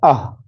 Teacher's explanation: कंठ से होता है अह